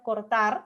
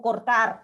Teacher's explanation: Yo puedo pronunciar cortar con la R vibrante simple o cortar, ¿no? Hacerlo más múltiple.